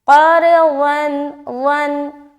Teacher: زبان کا جو بغلی کنارہ ہے اس کو اوپر کی داڑھ میں ٹچ کریں گے کروٹ لیتے ہوئے